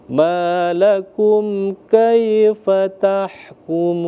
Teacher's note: malakum kaifa, afanya jangan ditarik. Kalau kaifa tah itu sudah dianggap panjang.